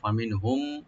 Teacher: ফা ওপেন রাখবেন আর নুন সাকিন এখানে আমরা জাহার করব ফামিনহুম মিম সাকিন পর যেহেতু মিম আসছে এখানে আমরা ইদগাম স্বাভাবিক